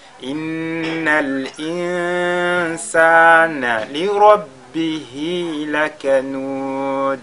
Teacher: Li rabbihi, la lettre Ra est lue avec At-Tafkhim